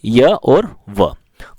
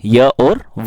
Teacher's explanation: जिन व्यंजन के उच्चारण में वायु बिना घर्षण के बाहर निकलती है तो उन्हें अर्धस्वर कहते हैं।